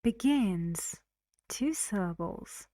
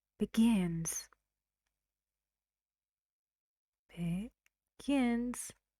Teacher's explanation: 2 syllables. Where's the stress? On the second. Gin.